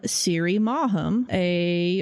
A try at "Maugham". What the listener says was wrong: Is it really two syllables? I think it's mom. Somerset Maugham. It's a weird name.